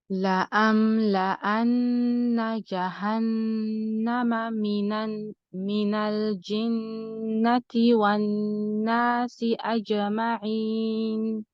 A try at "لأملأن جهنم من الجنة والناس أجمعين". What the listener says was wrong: Your qalqa should be a little bit quicker. It's close to sounding like a fatha, like you're saying aja.